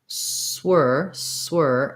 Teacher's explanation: Then if I want to add my S, swir, I just have to move quickly from the S position, close the lips for the W